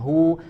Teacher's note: ada huruf ha ya sempurnakan bedakan dengan huruf H ya di pangkal tenggorokan kemudian dia harokatnya dhommah ya sempurnakan harokatnya bukan tidak disamarkan tapi